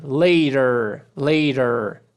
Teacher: Esse T vai ter som de R e a gente puxa o último R também.